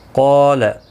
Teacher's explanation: قاف اور الف دونوں پر پڑھا جائیں گے، حروف مستعلیہ کے بعد الف بھی آیا ہے ساتھ میں تو یہ بھی پر پڑھا جائے گا